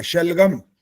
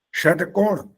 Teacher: शलगम इसमें हवा गर्म नहीं निकलेगी टकोण इसमें निकलेगी गर्म हवा